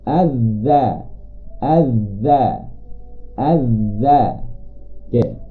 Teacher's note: ujung lidah akan bertemu hujung gigi atas